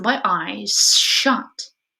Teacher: And again, especially when it appears together with other fortis fricatives, affricates, or plosives, as for example in my eyes shut, where the fortis fricative sh in shut influences the quality of the preceding lenis fricative z in eyes and devoices it, so that eyes becomes eyes, with my eyes shut. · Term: regressive assimilation